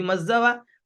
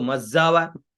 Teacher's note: फिर मज्जावा, मज्जावा का स्वर कैसे, वैसे ही मज्जावा, म का स्वर नीचे, ज ऊपर और व बीच में, तो मज्जावा।